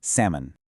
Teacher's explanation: Drop the L entirely. It is simply pronounced salmon. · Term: silent L